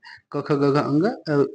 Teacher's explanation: वर्ण में क वर्ग आता है क ख ग घ अंग इनके उच्चारण में हमारी आवाज जो है कंठ से गले से निकलती है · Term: कंठ वर्ण